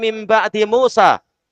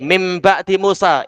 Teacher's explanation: Iya, iqlab. Yaitu membalik nun menjadi mim.